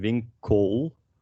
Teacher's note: at the end of words like here in vincol it's the dark l